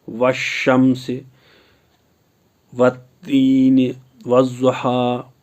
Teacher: الف اور لام کو نہیں پڑھا جائے گا بلکہ حروف شمسی کو پہلے والے حروف کے ساتھ ملا کر پڑھیں گے